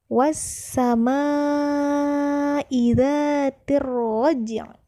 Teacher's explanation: Kemudian pada kata roj, di situ ada huruf ja, maka huruf ja di situ ialah salah satu huruf qalqalah, maka kita membacanya dengan dipantulkan.